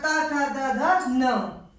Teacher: आपके दंत से बोले जाते हैं, दांतों की सहायता से बोले जाते हैं